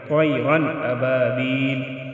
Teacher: طیرا ابابیل، ادھر ہم اخفا نہیں کریں گے، تنوین کے بعد حمزہ آیا ہے جو کہ حروف حلقی میں سے ہے، ادھر اخفا نہیں ہوگا